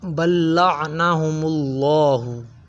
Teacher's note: عین جو ہے حروف حلقی میں سے ہے، اسے حلق سے ادا کریں گے، عین کی آواز نکالیں گے، نہ کہ حمزہ کی۔